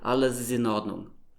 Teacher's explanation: So it link all the words together, basically saying one long word instead of 4 split up words.